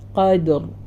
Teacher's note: വന്നത് കാരണം ഇവിടെ കാഫിന്റെയും റന്റെയും ഇടയിൽ ദാല് വരുമ്പോൾ ദാല ഉയർന്നു പോകരുത് ദാല ലൈറ്റ് ആണ് കാഫും റായും ഹെവി ആയിട്ട് തന്നെ പറയാ